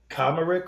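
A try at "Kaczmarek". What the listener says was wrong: I think Kosmerick. I think the C kind of works like an S in that, Kosmerick.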